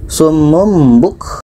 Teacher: Tanwin bertemu ba, tanwin bermakna hukum sini tanwin bertemu ba, ba ini tidak termasuk huruf 8, maka ini adalah dengung. Summum buk, tanwin bertemu ba dengung.